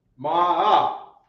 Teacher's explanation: I always hear that it's like a down up sound